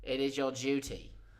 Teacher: Or more often, duty. Sometimes the D turns into a J.